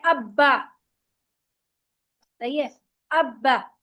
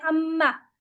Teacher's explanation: अच्छा जी, तो दो होंठ जो है इससे हमारे चार हुरूफ निकल रहे हैं। बा और मीम तो सिर्फ दोनों होठों को मिलाने से अदा हो जाता है, सही है। आप पढ़ते हैं अब्बा, सही है, अब्बा, दोनों होठों को मिलाया आपने पढ़ लिया।